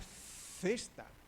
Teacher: Ustedes no pronuncian la Z aquí en Argentina. · Es un sonido interdental.